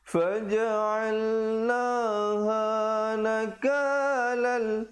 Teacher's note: idgham bila gunnah, iaitu masuk tanpa dengung. Asalnya nakalan, lam tanwin dua di atas bunyi lan, tapi bila datang lam jadi nakalal gitu ya.